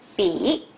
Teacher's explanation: The third tone drops to a pitch lower than the first tone and the second tone, and it returns to the pitch almost as high as the first tone